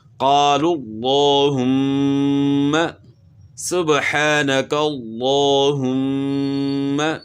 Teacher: تو میم میں غنہ ہوگا، میم مشدد ہے